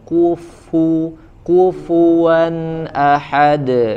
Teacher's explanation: kufu ufua ya karena huruf Fa dia harus disempurnakan dulu makhrajnya makhrajnya huruf Fa itu adalah gigi atas ketemu bibir bawah